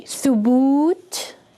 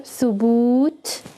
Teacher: notice how the waw is much longer